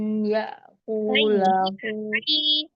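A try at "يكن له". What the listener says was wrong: ya kullahu tasdid lam ditasdidkan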